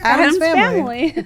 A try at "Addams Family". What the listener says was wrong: It's the wrong emphasis on the wrong syllable, guys.